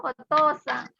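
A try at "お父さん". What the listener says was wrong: Jangan oto-san ya, tapi oto-san. To-nya panjang.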